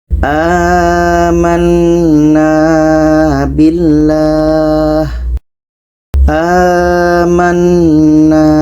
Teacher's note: huruf 'a' ini masih dibaca panjang, tetapi bukan karena mad asli, melainkan mad badal.